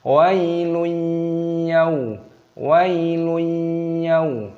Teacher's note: Dhammah tanwin bertemu dengan huruf ya, ini hukumnya dibaca idgham bi gunnah. Jadi dimasukkan dan disertai berdengung.